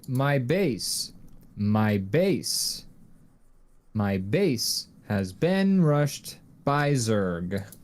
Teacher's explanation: you say the first syllable stressed and then the second syllable soft and you just alternate as you talk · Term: iambic pentameter